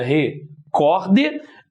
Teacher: Nós temos aqui a palavra também paroxítona, separação seria recorde. Aqui, o cor é a sílaba mais forte.